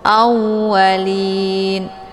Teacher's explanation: Lin ini dibaca panjang, boleh 2, 4 sampai 6 harokah. Dinamakan dengan mad arid lisukun.